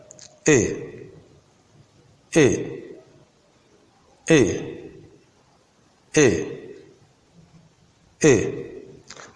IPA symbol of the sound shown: ɪ